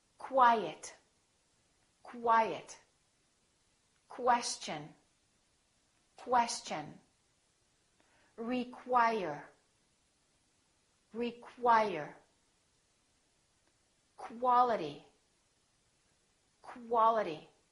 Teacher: they're pronounced as K-W. So there's a little W sound in here.